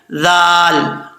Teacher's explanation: कुल कुल, इसको कुल नहीं पढ़ना, कौफ लाम पेश कुल, कुल हुवल्लाज़ी, यहां पे हा भारी साउंड के साथ पढ़ा जाएगा और वाव को पढ़ते वक्त होंठ गोल करेंगे। दाल जो है इसका मखराज है जुबान का सिरा ऊपर वाले दांतों के किनारे से लगे तो दाल पढ़ा जाता है